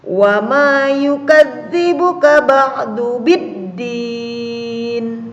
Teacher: Kalau tadi idhar qamariyah alif lamnya ini terbaca, tapi kalau idgham syamsiyah alif lamnya ini dilewati atau tidak dibaca, langsung taknya yang dibaca atau huruf sesudahnya